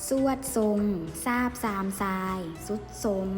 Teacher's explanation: ตัวทรเหล่านี้เราออกสำเนียงเป็นเสียงซอ